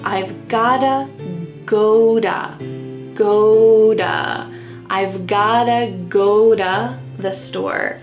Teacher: I've gotta go-da, that T is changing to a D.